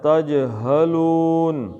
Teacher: جیم کا قلقلہ اور ہا کو سینے سے نکالنا ہے